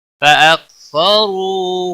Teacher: را کو پیش کی وجہ سے پر پڑھیں گے ، کاف کو ہلانا نہیں، رو واو مدہ ہے ایک الف